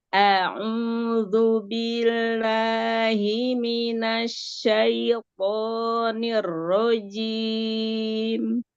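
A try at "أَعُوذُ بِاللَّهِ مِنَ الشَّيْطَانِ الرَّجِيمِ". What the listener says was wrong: Ya, bi-nya langsung ke lam ya. Jangan tamtil. A'udzu billahi minasyaitonir rajim.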